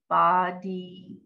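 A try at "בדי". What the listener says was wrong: Not ba, just the b.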